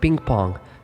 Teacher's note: It is a velar sound but it's also a nasal sound. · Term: velar nasal